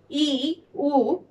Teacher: উচ্চ স্বরধ্বনি। এগুলোর উচ্চারণের সময় জিভ সবচেয়ে উপরে ওঠে।